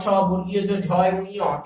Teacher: এই সকল ধ্বনি উচ্চারণের সময় জিহ্বা মূল তালু স্পর্শ করছে, তাই এর উচ্চারণ স্থান হচ্ছে তালু।